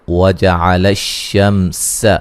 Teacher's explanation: सीन को बारीक सीटी से अदा करेंगे